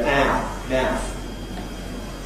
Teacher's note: Now in words like ‘mouth’, in real Broad Cockney, you go [æə], [mæəf].